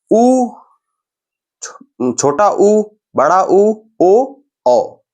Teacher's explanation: इनको उच्चारण करने में हमारा ओठ जो है वो गोल हो रहा है। देखिए उ, बड़ा उ, ओ, औ, चारों में देखिए हमारा गोल चेहरा हो रहा है ना, जो ओठ है वो गोल हो रहा है ना, वृत्ताकार की आकृति के लिए।